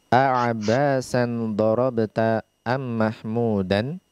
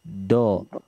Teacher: Harful dad dia keluar dari tepi lidah. Nah, tepi lidah yakni yang bersejajar dengan gigi geraham yang pertama setelah gigi taring sampai ke belakang, dia bersandar kepada gigi geraham, dan kita memberikan tekanan di tepi lidah tersebut.